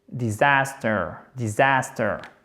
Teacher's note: Avec un accent tonique sur la deuxième syllabe